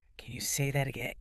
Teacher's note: If you say it with a flat face and a flat voice, can you say that again? It sounds aggressive, like you are angry.